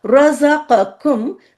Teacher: र मोटा ज बारीक क मोटा इसकी प्रैक्टिस करनी होती है पहले अलग रजा क र क